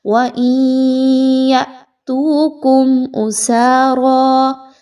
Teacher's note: میم ساکن کے بعد حمزہ کا حرف آ رہا ہے تو یہاں پر آپ نے میم کی آواز میں کسی طرح کا غنہ نہیں لانا، میم کی آواز کو بڑا کلیئر پڑھنا ہے۔